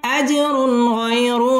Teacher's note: তানবিনের বামে গাইন আসছে ইজহার গুন্না ছাড়া স্পষ্ট করে পড়তে হবে